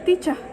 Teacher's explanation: Yang pertama itu ada non-rhotic. Itu lebih ke huruf R-nya di akhir kata itu jarang diucapkan atau R-nya samar-samar.